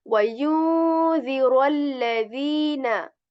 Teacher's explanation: So we are going to like articulate the sound of raw. Okay, there are like a rolling sound in a raw, but we are not going to overdo this because we are going to like make a natural sound of raw